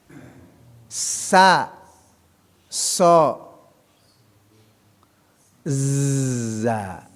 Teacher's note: Nah, yang sa ya, keluar dari ujung lidah hampir bertemu dengan gigi seri bagian bawahnya.